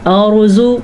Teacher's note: را کو ہم پور پڑھیں گے کیونکہ را ساکن ہے اور اس سے پہلے حرف کے اوپر زبر ہے